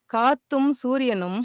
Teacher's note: we see this kind of rise for the accented syllable and then another rise at the end of that phrase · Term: double rise